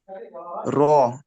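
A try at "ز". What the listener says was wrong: র নয়, দেখেন রর মতো দেখতে, উপরে একটা নোক্তা আছে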